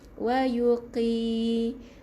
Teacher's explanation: Qaf baris atas dia tebal, tapi bila dia berbaris bawah ketebalan tu dinipiskan sedikit